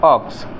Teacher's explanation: ओ की जो स्वर हमारा ओ है उसमें उच्चारण बोलेंगे आ, ह्रस्व उच्चारण यानी इसको हम हल्के से बोलते हैं।